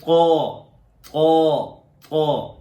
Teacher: زبان کا سامنے والا حصہ اور سامنے کے جو دانت ہیں ان کی جڑ، وہاں زبان کو لگایا جائے تو طا ادا ہوتا ہے